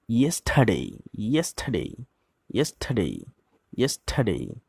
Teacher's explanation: এখানে আরটা সাইলেন্ট থাকবে।